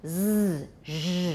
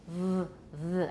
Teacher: z, zh, those are pretty loud. V are not quite as loud.